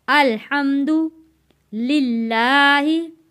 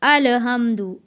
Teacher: यहाँ पे बहुत सारे जो लोगों की गलती हो जाती है वो पढ़ देते हैं अलहम्दु, अल नहीं पढ़ना, लाम को हिलाना नहीं है। लाम को हमने यहाँ पे रोक के यानी के अल पढ़ेंगे।